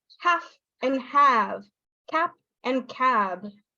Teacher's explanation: there is this difference in the vowel length